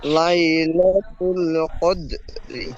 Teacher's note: রর নিচে জের এসেছে, তাই রকে তাই রকে বারিক করে পড়তে হবে।